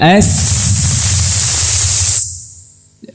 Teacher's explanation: Yang jelas kita meletakkan lidah di pangkal gigi seri bawah, ya, atau di gusinya.